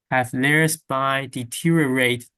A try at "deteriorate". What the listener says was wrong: Okay, it's very close. You're giving me 4 syllables. Deteriorate. Deteriorate. Orate. Orate. Deteriorate. Deteriorate.